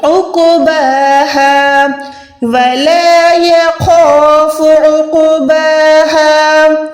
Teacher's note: عقباها، یہ عقبہ نہیں ہے، الف نہیں ہے، ٹھیک ہے نا، یہ عین ہے، عین یعنی حلق کے درمیان سے